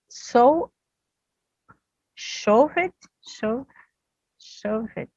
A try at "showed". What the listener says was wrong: So you're giving that extra syllable again.